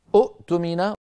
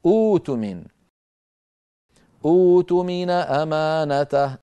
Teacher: نبدل همزة القطع الساكنة حرف مد مجانس لحركة همزة الوصل، نحو الذي اؤتمن في الوصل ما عندي إلا همزة القطع التي لونها أزرق، لكن لو بدأنا بها فتظهر همزة الوصل مضمومة اؤتمن، ولكن العرب لا تنطقها كذلك، بل تنطقها كما نراها في صورتها الأخيرة الثالثة، وهي أوتمن أمانته.